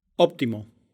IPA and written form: ˈoβ̞.t̪i.mo (óptimo)